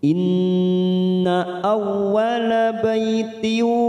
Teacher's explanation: Inna ada bacaan gunna musaddada karena ada nun yang bertasdid, kita tekan 3 ketuk.